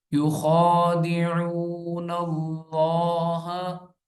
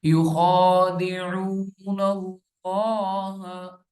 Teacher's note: نون لام سے کنیکٹ ہو رہا ہے، لام سے مل رہا ہے، کیونکہ شرط جب بھی آ جاتی ہے جس حروف کے اوپر تو وہ پچھلا اس کے ساتھ مل جاتا ہے۔